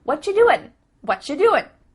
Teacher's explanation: at the end of the word doing that g also gets cut out